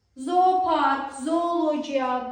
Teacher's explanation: Burda 2 o bir uzanan o kimi tələffüz olundu.